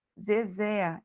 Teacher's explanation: Zezé é a última sílaba mais forte Então eu tenho uma palavra oxítona